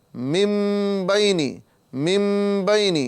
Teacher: یعنی نون کو من نہ کہتے ہوئے مم کہا جا رہا ہے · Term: اقلاب